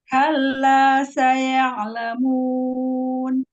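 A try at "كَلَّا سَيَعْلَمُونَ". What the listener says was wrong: Alirkan sedikit. Ya, iya-nya fathahnya jangan tamqid. Ya ala, jangan. Langsung ke ain.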